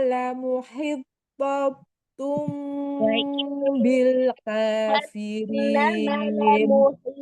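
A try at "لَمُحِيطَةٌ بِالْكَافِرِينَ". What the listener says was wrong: ulangi itu pendek itu lamu hi-nya yang 2 harakat wa inna jahannama la muhittatum bil kafirin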